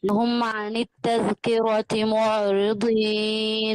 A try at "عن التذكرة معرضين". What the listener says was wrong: رقاقي الرأي. معرضين. فخامة بس.